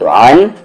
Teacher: عین کا مخرج بیچ والا حلق، اور یہ الف یا حمزہ کہہ لیں، حمزے کے مخرج باٹم تھروٹ یعنی نیچے والا حلق